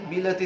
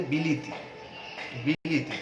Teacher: মাঝখানে যে স্বরেয়াটি ছিল সেটিও হ্রস্বইকার হয়ে গেছে। এই যে একটা স্বরধ্বনি সম্পর্কিত পরিবর্তন।